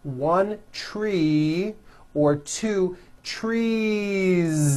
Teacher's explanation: So what you want to do if you're going to add an S to a word like this to make it plural is you continue the voicing throughout the whole word and add on a voiced Z.